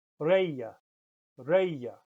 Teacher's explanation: that G between vowels, if it follows an E or an I, it sounds a bit like y, as in the English word, a bit like the English word buyer, with that y in the middle, buyer.